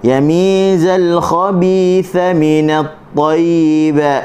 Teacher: Huruf zal hujung lidah berada di dalam mulut. Dia tidak kena mana-mana bahagian dalam mulut.